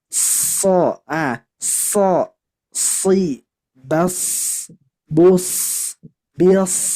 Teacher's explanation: ketika kita membaca huruf shad harus ada sifat sofir. Nah, jadi harus berdesis.